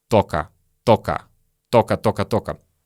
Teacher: Следующее слово «только». Чаще всего в беглой речи мы произносим как «тока»